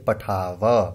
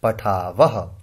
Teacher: मानो यहां विसर्ग नहीं होती तो हम इसे बोलते पठाव, लेकिन यहां विसर्ग है तो हम इसे उच्चारण इस तरह से करेंगे पठावह